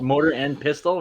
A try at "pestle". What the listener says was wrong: it's EL, PISTEL, mortar and pistel. But pistol, like you're using a pistol, but with an E, not a pistol, a pistel.